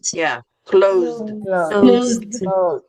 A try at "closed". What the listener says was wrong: there you go.